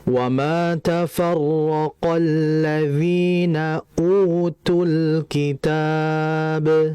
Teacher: U di situ itu merupakan mad asli. Dibaca dua harakat. Jangan lebih.